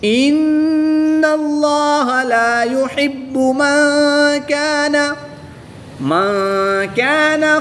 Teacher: نون ساکن کے بعد کاف حروف اخفا میں سے ہے تو یہاں پر اخفا ہوگا یعنی غنہ زمانی کر کے پڑھیں گے · ان اللہ لا يحب من كان خوانا اثیما، دو زبر کی تنوین کے بعد حروف حلقی میں سے حمزہ ہے تو یہاں پر اظہار ہوگا یعنی کہ تنوین کو خوب ظاہر کر کے پڑھیں گے، غنہ نہیں کریں گے